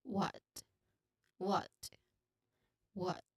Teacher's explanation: Short sound, as in hot, hot, and clear T sound at the end, like t. It should be clear at the end.